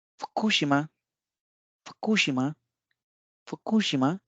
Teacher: ये कू जो है ये ऊपर की तरफ जा रहा है, उसके बाद शी नीचे की तरफ है प्रोनाउंसिएशन में। · फुकुशिमा यानी कि कू का जो पिच एक्सेंट है वो शी से ऊपर है।